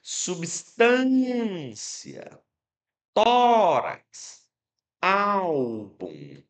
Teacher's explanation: Chamaremos de palavras parroxítonas todas aquelas que nós chamarmos e percebermos que a sua sílaba mais forte é a penúltima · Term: paroxítonas